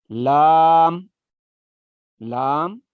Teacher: زبان کا کنارہ جب ثنایا سے ضاحک کے مسوڑوں کو لگے گا تو لام ادا ہوگا